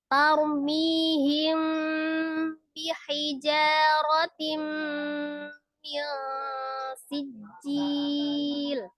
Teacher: Jadi dengan mimnya itu tetap dengan mengatupkan kedua bibir ya, dengan bertemunya dua bibir, tapi disertai dengan gunnah seperti itu ya. Tapi tetap disamarkan ya. · Ikhfa itu artinya samar, safawi itu karena dari bibir ya, mengucapkannya dari kedua bibir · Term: ikhfa safawi